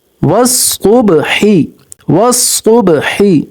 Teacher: स्वाद भी मोटा हरफ है, इसको मोटा करेंगे